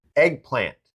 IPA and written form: ˈeɡ.plænt (EGGPLANT)